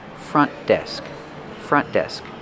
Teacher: Use a stop T for front. Do not release the sound.